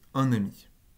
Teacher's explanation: Dans un ami, c'est un ne qui apparaît. Donc déjà, une consonne apparaît avant une voyelle.